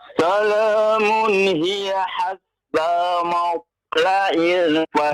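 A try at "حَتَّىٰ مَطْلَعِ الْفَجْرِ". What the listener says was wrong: Qalqalah huruf ta ya Pak ya. Qalqalah huruf ta. Matla'il fajr. Tadi ya sudah kita ingatkan yang huruf-hurufnya yang qalqalah itu yang harus diqalqalahkan ya.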